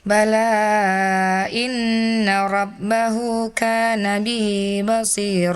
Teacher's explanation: Ketika berhenti dibaca dua harakat dan ketika dilanjutkan jadi mad jaiz munfasil ya. Dibaca panjang lima harakat.